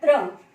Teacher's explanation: त और र की आवाज को मिलाया गया है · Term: संयुक्त अक्षर